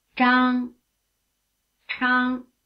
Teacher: consonant sounds with a strong R flavor, one unaspirated and one strongly aspirated